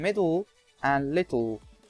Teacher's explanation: The simplest way to go from /t/ or /d/ to /l/ is to leave the tongue-tip on the alveolar ridge and only lower the sides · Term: lateral explosion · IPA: [mɪdl̩]